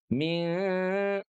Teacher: min yang keduanya harus keluar dari rongga hidung sengau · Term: gunah